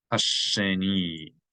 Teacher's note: geminate the shin. There's a dagesh in it.